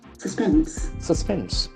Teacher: It has got two syllables and the accent falls on the second syllable.